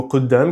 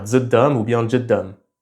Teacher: dans certains dialectes bédouins d'Arabie Saoudite et d'Irak, ça devient dj ou dz. Mais c'est un accent qui a tendance à disparaître et même ceux qui l'utilisent encore, ils l'utilisent seulement dans certains mots spécifiques.